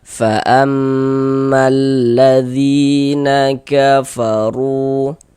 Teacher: Ada huruf ya, ada tanda sukun sebelumnya ada harakat kasrah. Maka huruf yang memiliki harakat kasrahnya dibaca panjang sehingganya dzi dibaca panjang. Mad thobi'i panjangnya dua harakat sesuai rumus satu yang warna hitam. · Fa'ammalladzina kafaru, huruf ra memiliki harokat dhammah ya, maka ini huruf ra kita baca tebal, kita baca tafkhim sehingga pangkal lidah kita naik terangkat ke atas ketika kita mengucapkannya. Kemudian ru dibaca panjang.